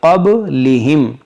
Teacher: دیکھیں با میں قلقلہ کریں گے